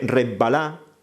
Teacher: pues lo que hacen es duplicar se contagian de la ese la s termina contagiándose del sonido siguiente y se asimila y se duplica · la S termina contagiándose del sonido siguiente y se asimila y se duplica, ¿no? Y por eso oiremos en algunas zonas de Andalucía decir esto, con B, resbalá y cosas así, ¿no?